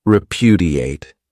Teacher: This verb has four syllables and the stress is on that second syllable